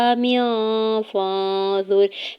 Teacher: मीम के नीचे दो ज़ेर की तनवीन पर इख्फा होगा, फाजुर में नून साकिन पे इख्फा करेंगे